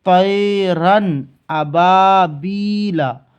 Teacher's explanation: جیسے طیرن ابابیلا، ایسا نہیں پڑھیں گے طیرن، یہاں غنہ نہیں کریں گے، بالکل ظاہر ہوگا تنوین بھی اور نون ساکن بھی۔ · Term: اظہار